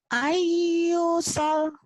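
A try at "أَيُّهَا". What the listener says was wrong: Ayyusal panjang mata bi-nya. Jangan ditekan, nggak ada penekanan di sini. Jangan ayyusal.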